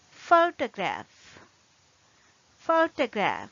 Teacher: We use the schwa sound for the second syllable. It is unstressed syllable. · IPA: /ə/